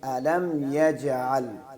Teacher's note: لام اور میم کو اس میں غنہ نہیں کرنا